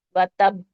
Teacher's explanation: با کو پڑھیں گے اور اس کو جھٹکے سے اس کے مخرج سے ہٹا لیں گے